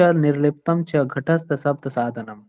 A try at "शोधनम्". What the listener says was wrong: और जो अनुस्वार आता है ना उसमें म का उच्चारण हम लोग करते हैं ना, तो शोधनम है, दृढ़ता चैव स्थैर्यम, बिंदु छूट गया है, हलन नहीं, अनुस्वार जो देखते हैं ना।